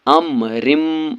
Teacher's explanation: یومن کے 4 حروفوں میں سے میم آیا ہے، اس لیے یہاں پر گنہ کے ساتھ ملا کر پڑھنا ہے، اس کو ادغام مع الغنہ اور ادغام ناقص بھی کہتے ہیں